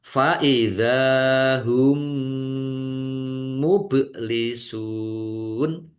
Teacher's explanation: Mim sukun bertemu dengan huruf mim. Idgham mutamasilain atau idgham mimi. Dibaca mendengung. Mendengung mim.